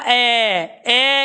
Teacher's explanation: ए उच्चारण कर रहे हैं तो बीच में से जीभ उठ रही है, आगे वाला हिस्सा अपनी जगह है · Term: मध्य स्वर